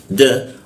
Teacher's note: Didengungkannya di huruf da ain da da yang pakai ujung lidah dia da tempelkan ke gigi dia